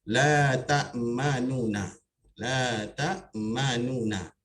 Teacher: Kalau harakat yang sebenar bagi dhammah adalah memuncungkan nu ya. Jadi pada raum ini jangan dimuncungkan.